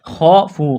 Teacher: خافوا، خواہ کو موٹا کرنا ہے، الف مدہ ہے، واو مدہ ہے، ایک الف کے برابر کھینچنا ہے